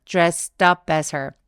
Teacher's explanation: 트 소리 뒤에 업 모음이 따라왔기 때문에 dressed up이라고 떡처럼 살짝 연결해서 발음해 주세요